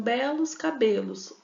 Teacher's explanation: Então vocês percebem aí que nós temos em belos e cabelos, eu tenho o finalzinho dela, ó, esse finalzinho ele é idêntico, mas o som ele não é igual, né? Então, belos cabelos, a vogal eu tenho em um a vogal aberta, no outro a vogal fechada.